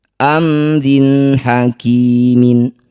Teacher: baca jelas kasrah tanwinnya rin tidak usah dengung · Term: izhar halqi